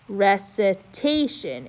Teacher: E it's pronounced like a UH now number eight it is there's two accents but the punchy one is after the long a